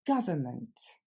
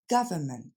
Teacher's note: Et on va le décomposer ensemble. L'accent tombe sur la première syllabe, ga, ensuite c'est le son f, et enfin ment. Je vous ai mis le N, mais finalement on l'entend pas vraiment.